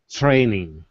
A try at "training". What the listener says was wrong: It's kind of starting to sound like a TH, training. So that's not terrible, but try to take it more into the training. Training.